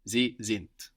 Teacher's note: Sind is spelled S-I-N-D. So we have the S pronounced like a Z there, and the D on the end of the syllable pronounced like a T